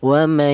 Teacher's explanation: Adapun namanya bighunah yaitu cara bacanya ada suara berdengung yaitu panjangnya dengung ee dua harakat atau dua ketukan.